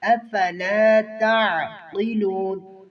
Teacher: عین کو واضح اور قاف کو موٹا کریں گے